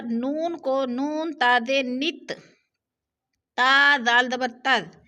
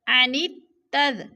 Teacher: فَمَا لَهُمْ عَنِ التَّذْكِرَةِ، عنت جو ہے یہ مشکل ورڈ ہے، یعنی یہ جو الف اور لام ہے ان کے اوپر نیچے کوئی زبر زیر نہیں ہے، تو لہٰذا نون کو نون تاد نت، تا دال دبر تد، نون کو تا کے ساتھ ملا کر پڑھیں گے، یعنی ادغام کریں گے۔ عنت تد، یہ الف اور لام یہ دونوں نہیں پڑھے جائیں گے۔